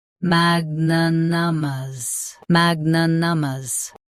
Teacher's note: Both US and UK have the same pronunciation of this word. Stress mag. Keep n soft and clear.